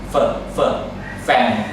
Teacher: คือฟันบนมันจะกดลงมาที่ริมฝีปากล่าง